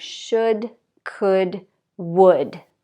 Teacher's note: so there's no L pronounced at all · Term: silent L